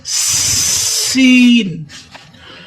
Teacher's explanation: बिस में आपने सीन को सिटी की आवाज देनी है